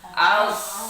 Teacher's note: membaca huruf shad itu bukan berarti memajukan bibir ke depan, aus, tapi mengangkat lidah belakang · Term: isti'la